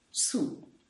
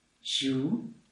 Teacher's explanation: the first one is the creaky tone, su. And the second, the low tone, ju.